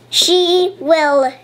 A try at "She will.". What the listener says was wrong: What's the sound of the W? Say the sound properly.